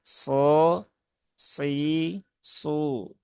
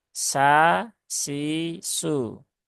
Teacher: kalau S sisu dia menggunakan Sin ya jadi pangkal lidahnya belum naik kemudian Tengah lidahnya juga belum lengket ke langit-langit